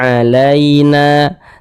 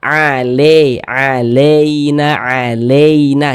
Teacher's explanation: ketika kita mengucapkan huruf Lin yang terjadi pada huruf Ya Sukun jangan sampai condong ke huruf e